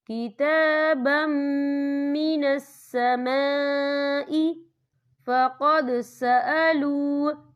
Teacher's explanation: یا دیکھیں من السماء، یہاں خالی الف سے پہلے زبر ہے اور اس پر مد بھی ہے. یہ مد جو ہے مد متصل ہے، اس کی مقدار 4 حرکت کے برابر ہے، تو ہم اسے 4 حرکت کے برابر کھینچ کے پڑھیں گے.